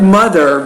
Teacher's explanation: Mother has been the Now the word mother, this is what's called an interdental consonant, and specifically that TH, mother, that's a voiced interdental consonant, which means when you produce the sound, you need to put your tongue through your lips and then create a vibration